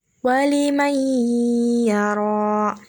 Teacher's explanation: Cara membacanya yaitu seolah-olah seperti diberi tanda tasydid dan diiringi dengan menggunakan suara berdengung satu alif atau satu setengah alif atau sekitar 2-3 harokat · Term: idgham bihunah